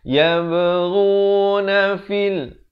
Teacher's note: ghain makhrajnya di hujung kerongkong. Ghuna fil bukan fil fa pada kasrah bunyi fi, bukan bunyi fe.